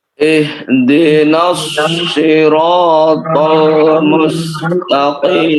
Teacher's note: Qim tebal, namun dia tebal yang paling tipis karena berharokat kasrah. · Baik, 3 huruf tebal. Shad, ra, dan ta.